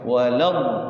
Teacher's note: Jadi 6 harokat, tasydidkan huruf depannya. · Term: mad lazim musaqqal kalim